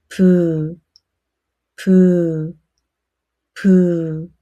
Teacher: Close your lip first and release a small puff of air. 부. Air flows through your mouth. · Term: 비읍